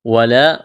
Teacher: واو کو جلدی پڑھنا ہے، یہاں الف مدہ ہے، الف کے برابر کھینچنا ہے